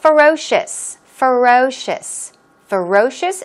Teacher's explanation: Ferocious, stress goes on the second syllable.